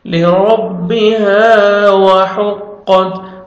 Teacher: را کو جب بھی فتحہ تھا را کو موٹا کر کے پڑھتے ہیں